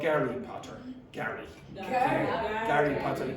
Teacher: they don't have a H sound in Russian, so they'll use Gary